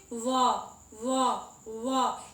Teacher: दांत और ओठ है वो दोनों से टकरा रहा है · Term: दंतोष्ठ